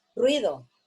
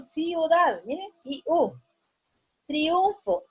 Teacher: se forman diptongos con dos vocales cerradas generalmente no va a haber vocales que las dos sean abiertas